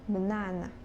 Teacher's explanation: in the word banana, the stress falls on the second syllables